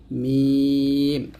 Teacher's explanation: দুই ঠোঁটের শুকনো অংশে মিলিয়ে উচ্চারণ করতে হয়